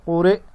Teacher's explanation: حمزہ زبر ا قوری ا وقفا قورئ. حمزہ ساکن جھٹکے سے پڑھا جائے گا